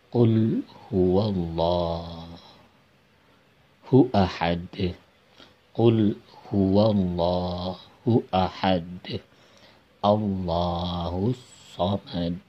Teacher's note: Nah, akhir ayat juga ini adalah huruf qalqalah, huruf dal. Karena akhir ayat maka dimatikan. Nah, maka dibaca membal. Seakan-akan ada pantulan.